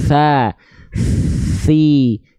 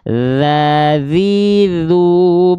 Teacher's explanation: kalau huruf ta dia mengalir nafas dan suara tenggorokannya tidak bergetar